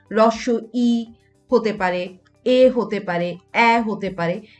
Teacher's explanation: এই স্বরধ্বনিগুলো দেখা যাচ্ছে জিভের সামনের অংশের সাহায্যে উচ্চারিত হয়, তাই এদেরকে কিন্তু সম্মুখ স্বরধ্বনি বলা হয়ে থাকে।